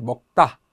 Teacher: 예사소리가 앞 받침 자음의 영향으로 된소리가 되는 거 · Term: 된소리대기